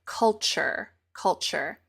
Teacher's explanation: the T and the U when they are next to each other blend into a new sound and the new sound is CH